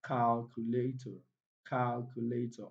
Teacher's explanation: So the primary stress falls on cal. So the correct answer here is calculator, calculator, option A.